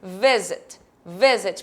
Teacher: a minha sílaba tônica não é a minha segunda é o meu V Visit Visit portanto eu não vou adicionar